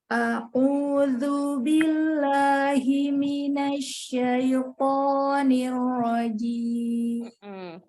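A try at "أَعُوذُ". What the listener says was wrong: Sambung ya Umi, Hamzah dengan ainnya. A'u.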